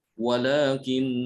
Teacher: Walakin didengungkan, ya, ditahan 2 harokat.